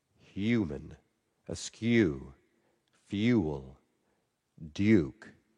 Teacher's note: there's another consonant you can put before that. It's a Y sound. It's the liquid u.